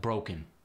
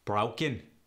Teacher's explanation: the long o goes to ow it's not quite as Extreme as the cockney accent